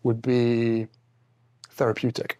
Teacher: He sometimes uses ejectives, which are more a British than an American thing.